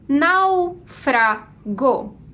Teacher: A sílaba mais forte é nau, que inclusive leva um acento. Essa é a penúltima sílaba da palavra, logo a gente tem aqui uma palavra proparoxítona.